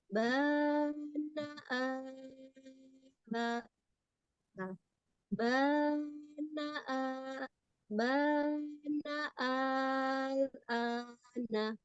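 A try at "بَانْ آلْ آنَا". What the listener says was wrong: Kalau al udah pas nih. Kalau bannya belum. Ban. N-nya didengungkan dulu. Ban al ana.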